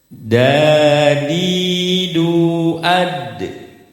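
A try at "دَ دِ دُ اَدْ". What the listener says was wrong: Nah, tertahan. Lebih cepat lagi. Ade.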